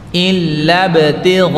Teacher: huruf ba sifatnya pantulan qalqalah